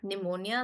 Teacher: pneumonia, which starts with a P, but we pronounce it with an N